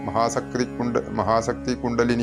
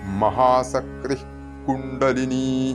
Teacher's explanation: മഹാസക്തി വിസർഗം വരണം വിസർഗം ശരിക്കും അവിടെ കേൾക്കണം